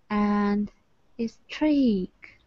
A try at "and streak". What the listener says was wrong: Yes, but not a streak. There's no a in front of. You put this sound there. You said a streak. There's no a. And streak.